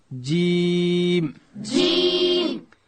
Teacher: د ژبې منځ لوړ تالو ته ورپورته کو، دلته حرف جیم ادا کیږي. داسې به وایو جیم.